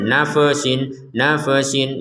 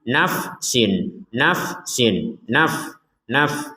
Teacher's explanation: Fa sukun juga kita tidak boleh mengucapkannya dengan harakat e